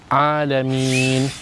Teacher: bila kita berhenti dekat alamin tu, kita boleh baca 2, kita boleh baca 4, kita boleh baca 6. Tapi kalau kita sambung kata ke surah Al-Fatihah tadi, kita sambung Alaminir Rahman. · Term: mad arid lis sukun